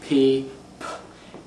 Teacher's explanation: When you pronounce a P, you pronounce it by not engaging your vocal cords and by stopping the flow of air with your lips. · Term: voiceless stop